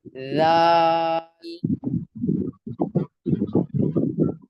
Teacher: دال بھی تا کی طرح پڑھیں گے زبان کی نوک نکال کے